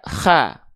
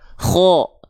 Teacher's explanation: Huruf kho ini dia nggak dibaca kha, tapi dia akan terdengar seperti vokal O. Kenapa? Karena dia huruf yang termasuk ke dalam huruf yang tebal.